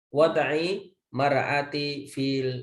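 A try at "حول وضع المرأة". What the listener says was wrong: Jangan dikorupsi. Di situ ada al. Haula wada'il mar'ati.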